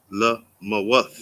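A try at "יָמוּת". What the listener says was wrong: No, there's no la. What is the first letter?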